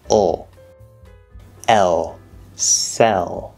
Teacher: And then of course we have the L there, which in this case is not just spelling, it actually is an L, but it's a half L, which is what I call the dark L, I think. The one that's not so bright and full.